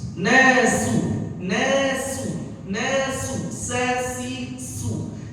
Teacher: Jadi pada kalimat sin yang berharokat dhammah bacanya harus tipis.